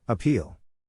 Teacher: syllable indicates where the accent or stress is in this case the accent is in the second syllable corresponding to peel